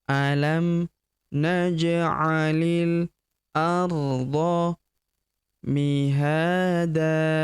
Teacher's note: huruf li langsung masuk sambung ke huruf lam yang berharakat sukun langsung masuk ke sini alifnya tidak dibaca atau dianggap tidak ada. · Huruf ha kita panjangkan dua harakat karena terdapat tanda alif di depannya yang ini. Mihada tanwin an kita hilangkan, kita rubah menjadi fathah dan kita panjangkan dua harakat. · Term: hamzah wasal